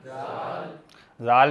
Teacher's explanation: ज़बान को बाहर कुछ निकाल कर तो जो अगले दो दांत हैं उसकी टिप पर लगाना है और फिर आवाज़ निकालनी